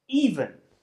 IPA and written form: 'iːvən (even)